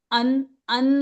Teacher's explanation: नून की पूरी आवाज निकाली, जबान जाके नून के मखरज पे लगी, इसका मतलब नून की आवाज निकली। तो इसका मतलब नून की आवाज को जाहिर किया, मतलब आपने इख्फा की जगह उन वो किया, इजहार किया।